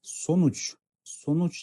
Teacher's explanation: соңғы буындағы дауысты дыбысымыз у, бұл yuvarlak